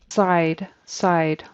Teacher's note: Just didn't hear a D on the end of that word. Side. Needs to be a D.